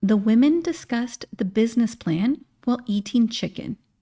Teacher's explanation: Women, business, and chicken all have that reduced e vowel sound that sounds like an I.